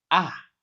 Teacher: you say ah fourth tone falling in realization